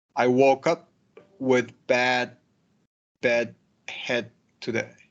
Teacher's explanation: And this one, when you have D followed by a word that starts with T, head today, they assimilate